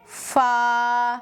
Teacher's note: اوپر کے سامنے کے ان دو بڑے دانتوں کو ثنایا علیہ کہا جاتا ہے۔ ان دونوں دانتوں کی نوک نیچے کے ہونٹ کے تری والے حصے سے مل کر فا ادا ہوتا ہے